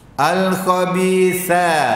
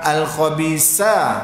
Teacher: Makhraj sa ni hujung gigi, gusi.